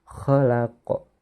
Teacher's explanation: harus dibaca panjang sebanyak dua harokat atau dua ketukan Mengapa demikian karena ada huruf alif Hai sukun setelah harokat fathah